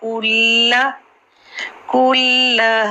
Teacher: کل کاف کی پیش کو کلیئر کرنا ہے اور پھر لام پر تشدید ہے